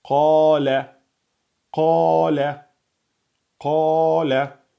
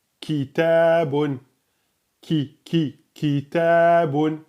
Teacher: Le qaf est au fond emphatique. Le kef, il est un peu plus en avant, à côté du qaf, et aminci.